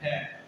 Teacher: ख में एक अंदर से ज्यादा आवाज आ रही है, ज्यादा हवा आ रही है, तो कहीं ना कहीं इसमें ज्यादा ज्यादा टाइम लग रहा है, ज्यादा खिंचाव लग रहा है और ज्यादा तनाव लग रहा है, तो इसे क्या बोलते हैं?